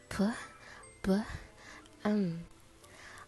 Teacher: Bilabial is where the lips come together